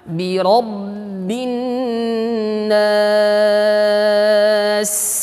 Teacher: ba dari bibir, ya, bibir atas dengan bibir bawah terkatup, bi syiddah juga sifatnya tertahan, bi rabbin nas.